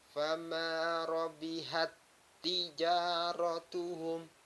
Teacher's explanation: Maka cara membacanya harus memasukkan huruf ta yang pertama dimasukkan kepada huruf ta selanjutnya